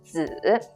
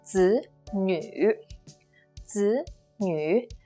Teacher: When it's used as with the meaning that's related to son or child, it's the third tone down and up.